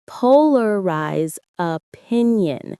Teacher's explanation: The stress is on the first syllable of polarize and the second of opinion.